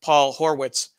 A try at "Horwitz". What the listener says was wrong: I'm pretty sure that he pronounces it Horwitz. It's a V.